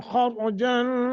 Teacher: أم تسألهم خرجا خارات دونوں موٹے کرنے ہیں